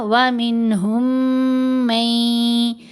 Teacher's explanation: میم ساکن کے بعد میم مشدد ہے، یہاں ہم نے ادغام کیا